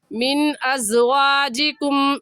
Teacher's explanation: زال کی جگہ زا اور زا کی جگہ زال پڑھنا درست نہیں ہے، یہ زا ہے، سختی سے پڑھیں گے